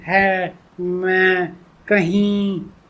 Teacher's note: मैं कहीं नाक और मुंह दोनों से नी ये इस तरीके की जो होती है ये अनुनासिक होता है। यानी कि सांस व हवा जिसे कहते हैं हवा मुंह और नाक दोनों से निकलती है बाहर